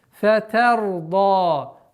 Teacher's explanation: При остановке удлинение аннулируется и остается у нас в размере двух огласовок. Фатарда. Удлинение, которое при слитном чтении, она будет у нас 4.